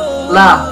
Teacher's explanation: Makhorijul huruf lam terletak pada punggung ujung lidah bertemu dengan gusi muka yang atas. · Yang kedua adalah bainiyah, yaitu suara tidak tercegah dengan sempurna dan tidak terlepas dengan sempurna.